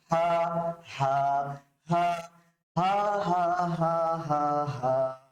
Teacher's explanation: কণ্ঠনালীর প্রথম ভাগ থেকে, উপরিভাগ থেকে, কোনো জোর নাই।